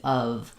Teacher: They might think of the letter F saying the F sound like in off. Uh instead we want the strong V